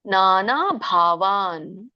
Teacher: ನಾನ ದೀರ್ಘ ಇದೆ ಮತ್ತೆ ಭ ಮಹಾಪ್ರಾಣ